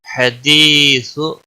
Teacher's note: یا مدہ ہے، ایک الف کے برابر کھینچ کر پڑھیں گے۔